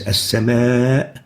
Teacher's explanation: Either the hamza comes after the med within the same word, and an example of that is as-sama. We find that the hamza is happening after the vowel in one word, and that's why we call it attached med, because the hamza is attached to the med letter.